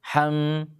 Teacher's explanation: masih ada dengungan di hidung